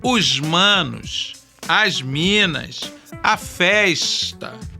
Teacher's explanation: aquele S chiado dos cariocas que se ouve ao final das palavras ou antes de uma consoante surda